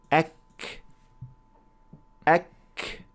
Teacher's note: the back of the tongue is raised to touch the area between the soft palate and the hard palate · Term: Arabic kaf